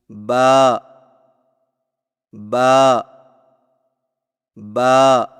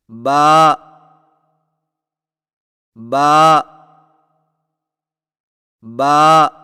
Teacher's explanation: با کی ادائیگی میں ہونٹوں کے گیلے حصے کو سختی سے ملا کر باریک آواز میں پڑھیں